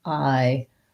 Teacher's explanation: Ironic, second syllable stress, although we still have some secondary stress on the I, so it's still that diphthong, but it'll sound more like ironic.